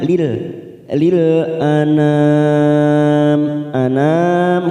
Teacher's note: Lil anam, lil ini yang pertama yang disukun adalah huruf lam, maka bunyinya lil anam kita samakan mat arid disukun 4 harokat kita panjangkan